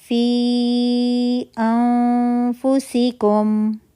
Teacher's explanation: پہلا لفظ فی مدہ پہ ختم ہو رہا ہے یا مدہ بن رہی ہے، اور دوسرا لفظ حمزہ سے شروع ہو رہا ہے انفسکم، تو ہم نے فی کو 4 to 5 کاؤنٹ اسٹریچ کرنا ہے۔